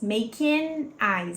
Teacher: Repara que aqui eu não falo esse G e esse N se conecta com I aqui do eyes.